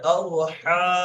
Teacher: এই হাটা গলার ভেতর থেকে উচ্চারণ হবে